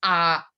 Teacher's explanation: hay vocales abiertas y la A es una A que tiene una posición allá atrás. O sea, casi como si estuviéramos pasando un traguito de agua o de otros traguitos y lo tenemos en la parte de atrás.